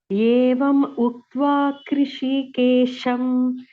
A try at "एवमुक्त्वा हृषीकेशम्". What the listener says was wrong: Krishiயும் இல்ல, ka இல்ல, KRIயும் இல்ல. Krishi. And ஏவம் முக்த்வான்னு பிரிக்காது படிக்கும்போது. ஏவமுக்த்வா together.